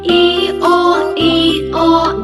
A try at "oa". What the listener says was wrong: E-O. E-O. It's not or. Never pronounce r at the end. It's E-O. E-O. E-O. E-O.